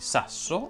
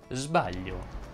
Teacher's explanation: la consonante s che può essere detta in due modi sorda come il sasso oppure sonora come in sbaglio